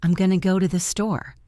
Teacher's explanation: the words going to became gonna